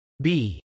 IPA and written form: bˈi (bee)